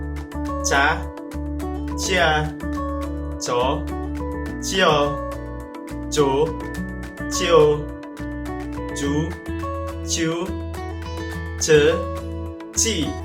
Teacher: jika kita umpamakan tangan kita diletakkan di depan mulut, atau misalkan tisu di depan mulut kita, akan terasa ada hembusan angin. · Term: huruf letupan